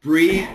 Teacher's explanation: do these first two words breathe so you notice the tongue the tongue makes the th the vibrated th